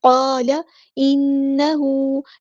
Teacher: نون پہ غنہ زمانی ہو رہا ہے، شد ہے تو یہاں پہ ایک الف کے برابر رکیں گے